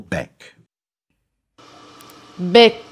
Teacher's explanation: No more exhaled air follows because vowel production is now complete, and the back of the tongue is already pressing against the rear of the soft palate in preparation for the final voiceless occlusive k. As the external air takes over, the flow pattern of the vowel core e becomes completely destabilized and gradually dissipates.